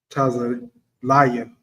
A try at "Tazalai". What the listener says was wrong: Not a ya at the end. Wallah, Tazalai.